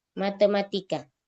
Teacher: Sebagian orang Indonesia ngucapin huruf T lidahnya keluar.